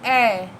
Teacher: कंठ और तालु जब मिलेंगे कंठ तालु तो ए बन जाएगा।